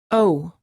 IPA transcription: oʊ